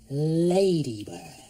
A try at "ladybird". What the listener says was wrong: Ah, not bad, but you have a problem with the L sound. Try it again. Ladybird.